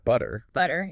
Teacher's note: in some American accents it can almost sound like a d